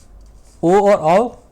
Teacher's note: ओ और आओ कंठोस्थ से बनेगा